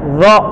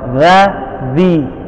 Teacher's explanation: Kalau za itu dia lepas, lidahnya istifal, lidahnya turun ya, makanya za, zi. Kalau dho lidahnya naik ketika disebutkan hurufnya dan stop nyebutin huruf dho, lidahnya terangkat, makanya bunyinya beda dengan za.